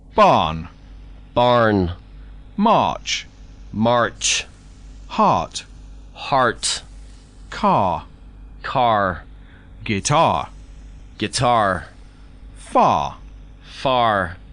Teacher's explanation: speakers of American English pronounce the r quite prominently